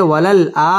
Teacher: ওয়াও ঠোঁট গোল করে উচ্চারণ করতে হবে ওয়ালাল আ মধ্যে বদল এক আলিফ টেনে পড়তে হবে ওয়ালাল আখিরা